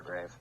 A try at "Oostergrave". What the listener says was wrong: Grav. I think the E was silent.